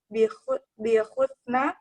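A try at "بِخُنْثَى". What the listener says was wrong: Bihunsa, bukan husna, terbalik.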